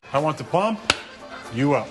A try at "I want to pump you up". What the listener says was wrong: You put the emphasis on the wrong syllable.